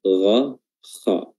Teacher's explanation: huruf ghain, makhrajnya sampai dengan huruf kha, yaitu tenggorokan bagian atas